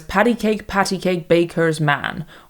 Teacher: the specific meter that Tennyson uses puts stress on the first syllable followed by two unstressed syllables. It's the same meter as patty cake patty cake baker's man or dactilic dieer if you're fancy.